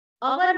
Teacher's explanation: तुम्हाला माहिती आहे आपण अवर म्हणतो HOUR. त्याचं स्पेलिंग आहे HOUR, पण त्याला हवर नाही म्हणत, अवर म्हणतो.